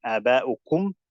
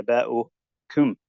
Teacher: people pronounce it with a hint of kasra